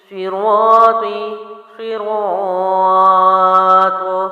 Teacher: اب یہاں پر میں نے جب وقف کیا تو میں نے الف مد کو 3 الف لمبا کیا، کیونکہ ہم نے پیچھے پڑھ لیا ہے کہ الف مد کے بعد والا حرف یعنی حروف مد کے بعد والا حرف اگر ساکن ہو تو 3 الف لمبا کرتے ہیں، ٹھیک ہے۔